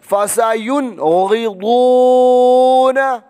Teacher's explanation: غین اور ضاد موٹے کیونکہ یہ حروف مستعلیہ میں سے ہے